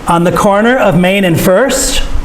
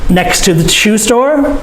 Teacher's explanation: We check information. Next to the shoe store, our voice goes up. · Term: checking information